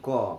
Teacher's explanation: এখন স্পৃষ্ট ব্যঞ্জন, মুখের মধ্যে ফুসফুসাগত বাতাস প্রথমে কিছুক্ষণের জন্য সম্পূর্ণ রুদ্ধ বা বন্ধ হয় এবং এরপর মুখ দিয়ে বেরিয়ে গিয়ে উচ্চারিত ধ্বনিগুলোই হলো পৃষ্ঠধ্বনি। ফুসফুসাগত বাতাস প্রথমে কিছুক্ষণের জন্য সম্পূর্ণ বন্ধ হয়, এরপরে বের হয়